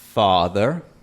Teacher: Como te das cuenta, no es exactamente el mismo símbolo. Y esta A es posterior. Y es la A de la palabra inglesa father o de la palabra inglesa palm.